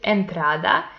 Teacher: it also belongs to llanas because the penultimate syllable is the stressed one, but these words end in a vowel, so it doesn't have the accent mark.